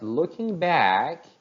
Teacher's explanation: the word back takes up more stress